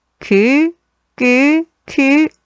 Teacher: 혀 뒷부분과 여린 입천장 사이에서 나는 여린 입천장 소리